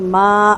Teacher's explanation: میں بھی نون ساکن کے بعد ہا ہے، اظہار ہوگا، اور ما یہاں پر مد واجب ہے، چار حرکت مد کو لمبا کریں گے